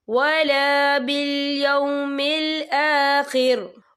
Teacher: وقف کی صورت میں را جو ہے ساکن ہو جائے گا